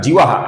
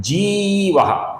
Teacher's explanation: कुछ लोग इसका जीवः ऐसा ह्रस्व उच्चारण करते हैं, जो कि गलत है। इसका सही उच्चारण है लंबाई के साथ जीवः। जीवः का जो विसर्ग है, इसके आगे विनयिता का वो आने के कारण इस विसर्ग का ओ होता है।